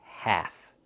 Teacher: Use the a sound like black cat. And remember the L is silent.